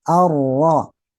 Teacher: Jadi getarannya cuma sekali, baik itu saat vokal saja tanpa tasdid maupun bertasdid ya. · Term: takrir